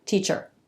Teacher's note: R takes over the schwa and erases it. We call that a syllabic consonant.